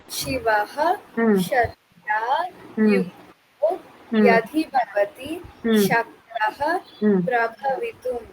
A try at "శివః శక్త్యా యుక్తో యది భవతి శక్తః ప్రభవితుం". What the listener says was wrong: యది దా దగ్గర ఒత్తు లేదు. యది భవతి ఓకేనా.